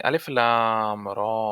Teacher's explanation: লামে একটু বেশি টান চার আলিফের